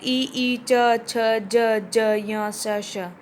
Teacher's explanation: जीवा कठोर तालु से छूती है, जो हमारा जीभ के ऊपर हार्ड सा पार्ट होता है ना, इसको बोलते हैं तालव्य।